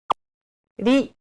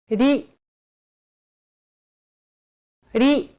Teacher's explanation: Think of the quick tapping motion your tongue makes as it strikes the top gum ridge in words like ladder or butter.